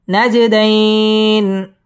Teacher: নাজে জিম কলকলার হরফ ধাক্কা দিয়ে পড়তে হবে। নাজে দাইন মধ্যে লিন একালিফ টেনে ওয়াকফ করতে হবে।